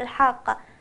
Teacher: الحاء تخرج من وسط الحلق